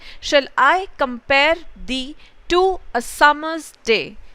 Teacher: So if you see, एक आपका unstressed syllable है और एक आपका stressed syllable है, and इस तरीके से ये आपके 5 pairs बनते हैं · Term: इयाम्बिक पेंटामीटर